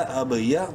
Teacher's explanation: با ساکن ہے اس لیے قلقلہ کریں گے با میں